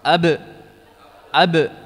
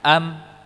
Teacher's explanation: mim dan ba AB dan am AB am sifat syiddahnya tadi kalau BA dia ditekan dirapatkan ber rapat ab ab Adapun huruf mim tidak ditekan am namun disertai dengan apa kisyum am m ya ini bagian kisyum jadi dia seperti huruf nun